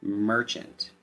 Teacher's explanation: Instead of the short A sound, we use the schwa short U sound.